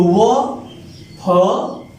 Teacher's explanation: वो में दांत और होठ दोनों की सहायता लेनी पड़ रही है। तो वो, फ, ये दो वर्ण ऐसे हैं जो दंतोष्ठ की सहायता से बोली जाती है।